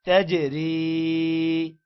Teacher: یہاں پر را کو باریک پڑھیں گے کیونکہ را کے نیچے زیر ہے